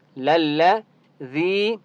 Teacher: یا مدہ ہے، ذال کو ایک الف کی مقدار کھینچ کر پڑھیں گے